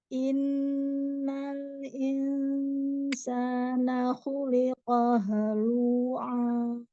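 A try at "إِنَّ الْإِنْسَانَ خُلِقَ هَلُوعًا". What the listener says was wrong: Ya, lamnya tipiskan lagi lu, bukan lu tapi lu. Halu.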